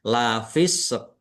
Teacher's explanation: qof sukun itu kan qalqalah atau memantul. Maka diakhiri dengan pantulan. Diakhiri dengan pantulan lafis.